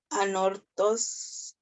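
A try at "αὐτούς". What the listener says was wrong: That a and the u is a diphthong. That's au. Au. Autus. Autus.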